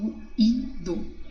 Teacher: ruído, tanto que até se separa, é um hiato, ó, ruído. E cheiro de tom, tá vendo?